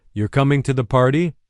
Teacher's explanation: You're coming to the party, the pitch goes up. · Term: rising